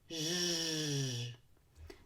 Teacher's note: It's just like an SH, but you need to engage your vocal cords and let them vibrate. Round your lips.